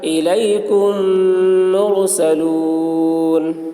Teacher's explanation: میم ساکن کے بعد میم آ رہا ہے اس لیے میم کو میم کے ساتھ ملا کر غنہ کے ساتھ پڑھیں گے ، اس کو ادغام شفوی کہتے ہیں۔ الیکم مرسلون لہم ما